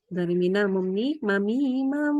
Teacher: Diulang lagi dengungnya 3 harokat.